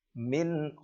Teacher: harus dibaca jelas tidak boleh dibaca dengung